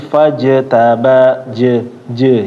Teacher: membaca Jim sukun Ya ini yang lainnya juga tadi ketika membacanya Jangan sampai c c gitu ya tapi bacaannya benar-benar je